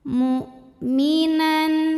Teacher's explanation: hamzah itu dari segi suara sifatnya syiddah, kuat ya, tertahan.